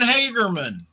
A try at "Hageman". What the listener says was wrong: Hageman. There's no R in it.